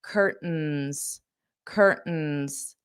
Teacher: I'm going to use that glottle stop and not pronounce the t. That isn't a requirement for you, but that's how Americans pronounce this. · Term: glottal stop